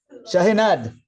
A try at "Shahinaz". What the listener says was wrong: No, Z at the end. There is Z, not N.